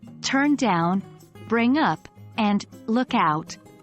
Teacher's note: phrasal verbs in English follow a common stress pattern where the main stress falls on the particle or preposition. For instance, in turn down, bring up, and look out, the stress is on down, up, and out, respectively.